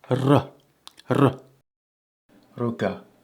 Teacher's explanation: The R is trilled, quite a bit like Welsh, but not quite.